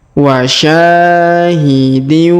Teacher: Perhatikan huruf sya terlebih dahulu. Kita panjangkan 2 harokat karena di depannya terdapat alif